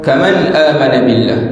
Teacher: nun mati bertemu dengan hamzah, tidak ada dengung